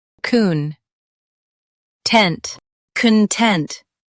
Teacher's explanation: stress Tent and keep con soft. con tent content stress Tent and keep con soft.